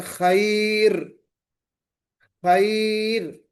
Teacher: را ساکن سے پہلے اگر یا ساکنہ آ گیا یا ساکنہ آ گئی تو ہم اس را کو ہم باریک پڑھیں گے